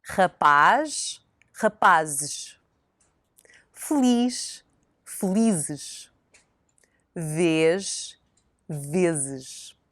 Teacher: the Portuguese ending ES is very different from the Spanish, so no open E here. It's muted and quite hard to hear. Also note how the sound of the Z changes from the singular to the plural.